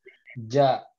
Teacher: jim itu nempel benar-benar nempel gitu ke atas. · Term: huruf jim